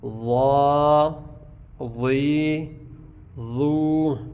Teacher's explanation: اور ضا اس کی ساؤنڈ تو موٹی ہے لیکن اس کو زا کی طرح اس کی آواز نہیں آئے گی، ٹھیک ہے. ساؤنڈ اس کی موٹی ہوگی لیکن سی ٹی کی آواز اس میں نہیں آئے گی